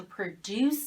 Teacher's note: in the verb produce after c we have an e at the end the o is a schwa